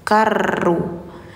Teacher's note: inna ila rabbikaruj ini harus langsung ke siro karru alif lam syamsiyah jadi alif lamnya disamarkan langsung ke huruf ro